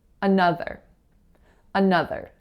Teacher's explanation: in the word another the strongest syllable is that second syllable